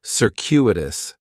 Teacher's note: The stress is going to be on that second syllable. And that cu is kind of like you're saying the letter q.